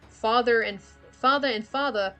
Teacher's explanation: I say them the same because I don't pronounce the R in farther. And I'm having to put it in there to distinguish it, like farther. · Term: non-rhotic dialect